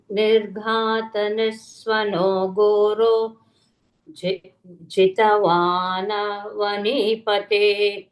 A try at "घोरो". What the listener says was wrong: Ghoro, Mahaprana, not Goro.